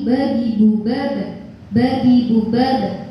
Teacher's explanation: pengucapan qalqalah yang benar itu adalah mencondongkan suara hurufnya ke harokat fathah